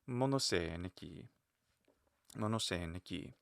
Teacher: again, at the end of the sentence, I like the solid fall.